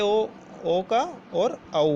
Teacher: छोटे ओ का और औ का, इन दोनों का उच्चारण जो होता है दोस्तों वो हमारे कंठ और ओष्ठ से होता है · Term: कंठोष्ठ